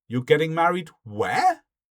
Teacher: you raise your intonation on that final word. But by using the question word, you're checking the information or questioning the information.